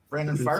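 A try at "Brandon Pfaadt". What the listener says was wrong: fart. Yeah, puff fart. You got to put the P in there. It's not silent.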